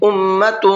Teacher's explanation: أُمَّةٌ، میم کے اوپر تشدید ہے، غنہ کریں گے اور تا کے اوپر تنوین ہے اور تنوین کے بعد میں قاف ہے اور قاف اخفا کے حرفوں میں سے ہے تو تنوین کی آواز میں اخفا کریں گے